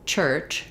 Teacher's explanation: because it has the ch at the beginning and the end so i'm stopping the air initially but then it comes out in a burst that's um it's it's basically a mishmash of sounds so it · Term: affricate